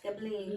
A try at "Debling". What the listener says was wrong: It's no G, it's Debling.